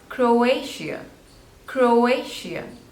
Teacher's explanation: and the stress is on the second one